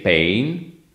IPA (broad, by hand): peɪn